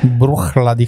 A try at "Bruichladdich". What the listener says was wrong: It's no ich on the end, just Laddich.